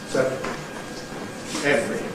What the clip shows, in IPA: ˈsevrəl